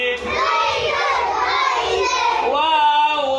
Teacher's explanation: দুই ঠোঁট গোল করিয়া মধ্যে সামান্য ফাঁক রাখিয়া ওয়াও উচ্চারিত হয়